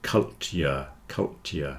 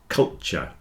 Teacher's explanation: if you're speaking quickly the T joins together into a CH and you'll get culture just like in future and nature and